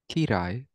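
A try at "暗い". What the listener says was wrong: Ki. So it's not kirai, it's kurai.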